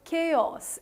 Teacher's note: the syllable which is there in the start is actually stretched a bit so you pronounce it as chaos it's not pronounced as chaos